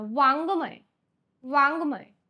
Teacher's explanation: आपण याचा जो उच्चार करतो तो हा नासिकेतून होतो त्याच्यामुळे त्याला काय म्हणतात अनुनासिक वर्ण